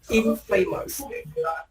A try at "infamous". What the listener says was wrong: Because you don't stress on the A. You don't say infamous. You say infamous. Without the in, it's famous.